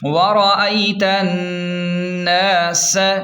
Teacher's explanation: ورأیتن، سین زبر س، ورأیت الناس، سین سیٹی کو واضح کریں، سین کو سیٹی واضح کریں